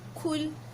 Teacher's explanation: Kul, mesti rasa angin daripada mulut kan?